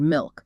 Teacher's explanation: kind of blend it in oh yeah I can hear that it's almost like the L is losing its consonant and becoming more vowel like · to some people that final L can sound a bit like a u